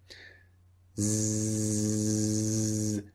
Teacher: Now you can feel a vibration when you make the sound Z. That is the only difference between the two sounds. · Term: Z sound